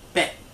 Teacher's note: bei is a falling tone ending in a T